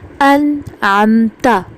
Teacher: یہ اظہار کرنا ہے، ہم نے یہاں پہ نون کی آواز کو ظاہر کرنا ہے.